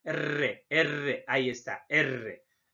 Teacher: Pueden ser vibrantes simples o laxas, en este caso solo el consonante R, o múltiple o tensa, la doble R. La denominación se debe a la vibración del ápice de la lengua